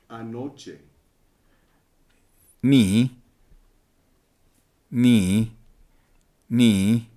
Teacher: Here's an example of a concave 3-tone sequence /323/ in the Triqui word for ‘last night’. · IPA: /nːiː323/